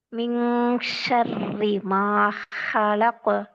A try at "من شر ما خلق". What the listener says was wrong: ஹாட உச்சரிப்பு வரணும். ஷீண்ட சவுண்ட் வரும். ஷே சவுண்ட் வரணும்.